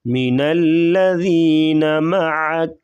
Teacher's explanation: ذال کو نرمی سے، عین گلے سے